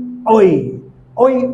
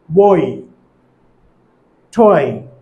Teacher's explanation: আবার যখন ওই উচ্চারণ করব তখন জিহ্বাটি মিড ব্যাক থেকে হাই ফ্রন্টে চলে যাবে আর ঠোঁটটি আনরাউন্ডেড টু রাউন্ডেড হবে।